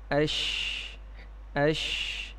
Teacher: شین کی ادائیگی میں بھی سانس جاری ہے اور آواز میں پستی ہے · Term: ہمس